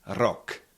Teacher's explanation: in the word it's actually just like one or two vibrations